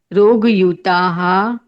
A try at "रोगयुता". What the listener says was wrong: नहीं, विसर्ग नहीं करना है, रोगो युता।